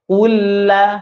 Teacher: Huruf lamnya itu dimatikan dengan sempurna. Bukan ul, ya, tidak kaku, tidak monyong terus dia.